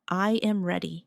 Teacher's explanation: Now listen to the difference when I make a statement. I am ready. The voice falls naturally at the end.